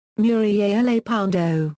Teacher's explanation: with a voiceless Dental fricative